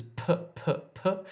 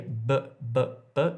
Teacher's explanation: p is aspirated, but b is voiced